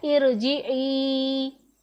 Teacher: रा साकिन से पहले आर्जी ज़ेर हो तो हम रा को पुर पढ़ेंगे।